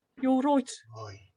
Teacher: a lot of the vowels that, you know, in RP would be I, in Birmingham are oi.